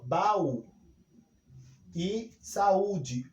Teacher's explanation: nós temos aí a presença de vogais com duas intensidades altas. Portanto, as vogais elas não se juntam na mesma sílaba, elas se separam. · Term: hiato